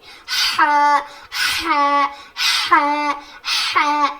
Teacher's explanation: حلق کے بیچ والے حصے سے جب ہم ہا کہتے ہیں تو سانس ہماری باہر آتی ہے, جیسے کہ ایسی آواز آئے گی, سانس ہماری باہر نکلے گی.